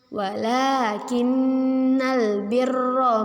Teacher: Tuwallu wujuhakum kibalal masyriqi wal maghribi walakinna nun bertasydid Apa hukum bacaan nun bertasydid? Ya, nun bertasydid kita sebut dengan gunnah. Kita baca bagaimana cara membacanya, yaitu kita dengungkan dua harokat.